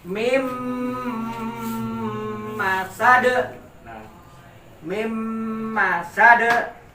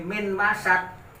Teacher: Mim masuk ke huruf mim, ketahan bibir kedua-duanya tertutup. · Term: idgham bi gunah